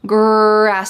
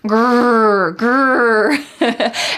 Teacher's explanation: This is the R sound, or in American English, we often call this the colored R because it's very strong.